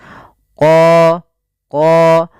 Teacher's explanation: untuk huruf qof sendiri makhrajnya daripada pangkal lidah kita dengan langit-langit atas